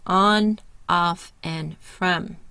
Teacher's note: Tongue is low and all the way back of the mouth. Mouth is open and rounded. It's heard on, off, and from. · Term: the short O sound